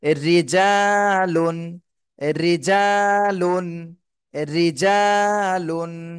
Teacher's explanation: রি জিম আলিফ যাব জা রিজাল লাম দুই পেশ লুন রিজালুন জিমে এক আলিফ টান দিতে হবে জবরের বামে খালি আলিফ এটা মদের হরফ হয়েছে এজন্য এক আলিফ